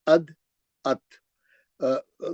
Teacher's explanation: जबान की नोक जाके ऊपर के दांतों के जड़ में लगती। अद अत, जड़ में, यानी जहां से दांत बाहर आता, उसकी जो जड़ है दांत की, सामने के दो दांतों की, वहां जाके जबान की नोक लगती। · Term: मखरज एक ही है